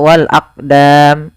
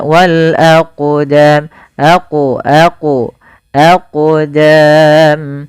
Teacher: ketika ada huruf qaf atau yang semisalnya yaitu huruf qalqalah, maka cara membacanya yaitu kita memantulkan huruf qafnya, yaitu kita pantulkan.